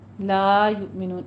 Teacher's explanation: یؤمنون میں حمزہ پہ جھٹکا دینا ہے اور نون میں نون، یہ مد آدھی وقفی ہو جائے گی.